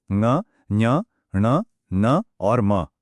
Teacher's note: हर वर्ग का जो पांचवा अक्षर है वो एक नासिक्य ध्वनि है। मतलब उसकी आवाज नाक से भी निकलती है।